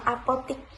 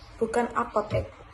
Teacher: penutur itu mengganti vokal tengah E dengan vokal depan I, sehingga terjadi penyimpangan pelafalan dari bentuk baku. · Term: perubahan vokal